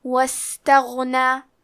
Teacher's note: ہمزے کا معنی ہے حرف کی آواز ایسے کمزور ہو کہ اس میں پستی پائی جائے، تو ہم یہ کلمہ کو ایسے پڑھیں گے واستغنا. حرف الغین کی ادائیگی حلق کے اوپر والے حصے سے ہے. غین حروف تفخیم میں سے ہے تو ہمیں غین کو موٹی آواز میں پڑھنا ہے.